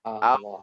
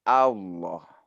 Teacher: Di sini A-nya ditipiskan saja ya.